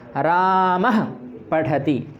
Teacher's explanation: रामः जैसे ही हम बोलते हैं तो हमारा जो मुख है, मुख विसर्ग के साथ बंद हो जाता है।